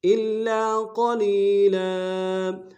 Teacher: لام کھینچیں گے، لام کے اوپر تنوین ہے غنہ کریں گے، الا قلیلا وقف میں تنوین کو الف سے بدلیں گے